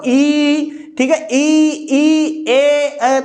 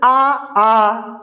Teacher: जैसे ही आप ई बोल रहे होंगे जीभ पे आगे बल लग रहा होगा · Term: अग्र स्वर